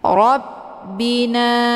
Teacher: na dibaca panjang 2 harokah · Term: mad tabi'i zahiri